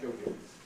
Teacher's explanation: Jogging. Yes, and a clear sort of syllable break there, which is a different rhythm from the English jogging.